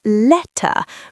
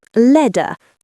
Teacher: If I'm speaking clearly, I say letter. I hit the t. It's a sharp t sound.